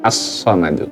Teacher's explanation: Huruf shad termasuk huruf syamsiyah. Sehingga bunyi lamnya dileburkan ke huruf shadnya. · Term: idgham syamsiyah